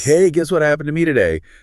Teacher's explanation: If my friend wants to start a brand new exciting story, their voice changes. Their pitch goes way up. They get louder.